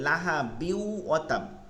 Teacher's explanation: পরবর্তী শব্দকে তাসদিদ দিয়ে পড়তে হয় গুন্না সহিত। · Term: ইদগম